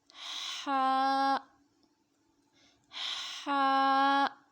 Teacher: حلق کے درمیانی حصے سے ہا ادا ہوتا ہے۔ ہا، ہا کو بھی ایک الف کی مقدار تک لمبا کر کے پڑھیں گے.